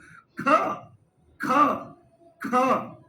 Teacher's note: जैसे ही ख बोलते हो तो पूरे कमर तक इसकी दम निकलता है, और यहां से इस वाले हिस्से से ये उठ करके चलता है। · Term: महाप्राण